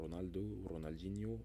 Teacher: représente le son r roulé que nous prononçons par exemple en espagnol · on prononce ce R roulé brièvement